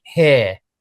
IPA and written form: hɪə (here)